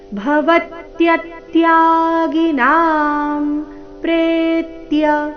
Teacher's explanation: ಪ್ರೇ ದೀರ್ಘ ಬಂದು ನಂತರ ಆಘಾತ ಬರಬೇಕು